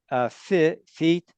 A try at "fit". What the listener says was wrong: this I is a short vowel.